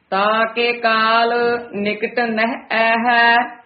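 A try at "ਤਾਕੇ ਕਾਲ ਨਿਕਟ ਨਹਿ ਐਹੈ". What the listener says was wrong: ये भी एड़े दिया दलावा हाहे दिया दलावा दीर्घ मात्रावा हन। आए है नहीं कहना, ए है इस तरह उच्चारण करना है। ताके काल निकट नह ऐ है।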